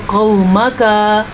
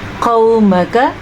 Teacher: میم اور کاف کو آپ نے بالکل بھی لمبا نہیں کرنا کیونکہ اس کے اوپر پڑی زبر ہے، اگر اس کے اوپر کھڑی زبر ہوتی تو یہ لمبے ہوتے۔